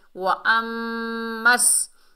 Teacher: میم مشدد میں غنہ ہوگا اور میم کو سین سے ملائیں گے، سین کو سختی اور سیٹی سے پڑھیں گے۔